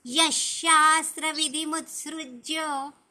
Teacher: विधी दीर्घ नका करू आणि यहा नंतर जो विसर्ग आहे ना त्याचा आपण श चा उच्चार करतो